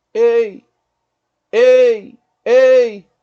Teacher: Uma vogal a gente fala com mais força, a outra ela vai sumindo praticamente, é mais fraco. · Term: ditongo decrescente